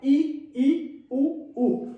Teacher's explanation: जीभ की ऊंचाई अधिकतम रहती है और मुंह बंद रहता है, ई उ उ, मुंह बंद हो जाता है। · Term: संवृत स्वर